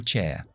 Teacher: en el inglés estándar británico no pronunciamos R's después de vocales. Así que yo digo chair, pero a lo mejor alguien de Estados Unidos diría chair y metería esa R ahí con mandíbula, chair, ahí. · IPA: /ʧeə/